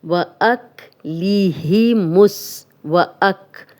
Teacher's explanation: اب حمزہ کی زبر کاف سے ملے گی کیونکہ یہ جزم والا حرف ہے۔ وَأَكْلِهِمُ، اب لام اور الف نہیں پڑھا جائے گا۔